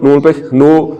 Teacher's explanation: پیش کو پڑھتے ہوئے ہونٹ گول ہو رہے ہیں